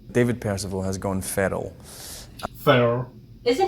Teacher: the r is tap meaning that the tip of the tongue hits the alveolar ridge the roof of the mouth as you are articulating it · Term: R is tapped